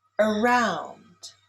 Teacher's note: Around is stressed on the second syllable.